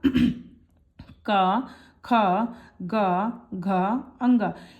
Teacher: तो का वर्ग जो होता है इसका उच्चारण स्थान कंठ से होता है। तो का वर्ग में क्या क्या आएगा का, खा, गा, घा, अंगा।